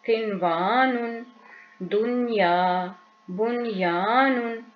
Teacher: नून साकिन है और उसके बाद वाव आ गया, लेकिन हम इसमें इदगाम नहीं करेंगे और गुन्ना नहीं करेंगे